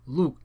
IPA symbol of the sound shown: lu̱'